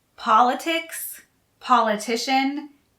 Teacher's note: politics and politician have the stress on the first syllable